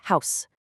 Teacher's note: One really interesting thing about it is that, unlike a lot of other regional accents, Geordie speakers almost always pronounce the H at the beginning of words like house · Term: Geordie accent